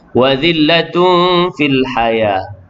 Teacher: tanwin bertemu dengan fa, ikhfa hakiki dengung 2 harakat